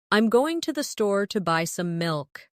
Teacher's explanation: Notice how certain words are stressed. Going, store, buy, milk.